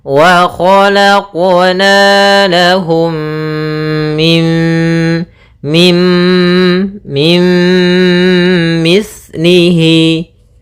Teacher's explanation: cara membacanya adalah memasukkan nunnya kepada mim Tapi tidak secara sempurna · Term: idgham naqis